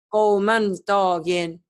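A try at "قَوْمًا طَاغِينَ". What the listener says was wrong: Baca seperti itu salah harusnya. Kenapa harus qaumang? To, bukan sod. Karena tanwin ketemu to, maka harus dibaca ikhfa. eng samar ya. Qaumatogin. Qaumatogin.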